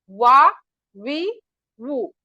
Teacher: और वाव को हम होटों को गोल कली की तरह बनाएंगे तो वाव होगा · खुश्क हिस्सा मतलब ड्राई पार्ट, हमारे लिप्स का जो ड्राई पार्ट्स होता है वहां से अदा होगा मीम, और वेट पार्ट जो अंदर का होता है होठों का हिस्सा वहां से अदा होगा बा, अब, अम, इस तरह। और वाव को हम होठों को गोल कली की तरह बनाएंगे तो वाव अदा होगा